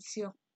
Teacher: dialek Sabah juga menggugurkan konsonan Y dan menggantikan konsonan Y kepada vokal I. Contohnya, bagi perkataan shock, konsonan Y akan digugurkan dan digantikan dengan vokal I, maka perkataan shock dalam bahasa Melayu baku akan menjadi perkataan siok dalam dialek Sabah.